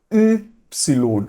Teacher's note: É como se a gente fizesse, né, a boca do U e tentasse pronunciar o I